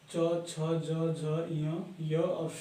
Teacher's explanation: तीनों ही च, छ, ज, झ, य और श, इनकी जो है उच्चारण स्थान तालु है